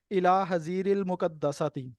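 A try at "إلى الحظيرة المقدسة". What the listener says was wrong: الى الحزیرۃ، الل پڑھیں گے نا؟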